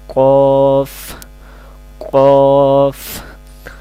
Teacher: قوف زبان کی جڑ اور درمیان کے حصہ پر تالو سے لگانے سے لفظ ادا ہوتا ہے۔ اس کو قلقلہ کہتے ہیں، اس کو موٹا پڑھتے ہیں، آسان زبان میں کہتے ہیں موٹا پڑھنا، قوف قوف۔